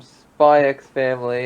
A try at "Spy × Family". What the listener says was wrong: It's actually supposed to be just pronounced Spy Family. You don't pronounce the X.